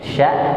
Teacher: shin, sya, dia di tengah juga, kena dengan langit-langit di pertengahan lidah. Lidahnya jangan sampai keluar mulut ya, tapi dia tetap pada tempatnya.